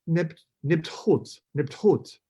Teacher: So you can hear me doing the T and the H really close together.